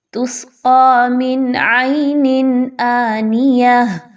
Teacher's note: عین کو آپ نے بہت اچھے سے حلق کے سینٹرل پارٹ سے، وسط حلق سے نکالنا ہے